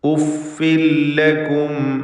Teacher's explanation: ഉഫിൻ എന്നതിലെ തൻവീനിന് ശേഷമുള്ള ലാമിൽ പൂർണ്ണമായും ലയിപ്പിച്ച് മണിക്കാതെ ഉച്ചരിക്കണം. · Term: ഇദ്ഗാം ബിഗൈരി ഗുന്ന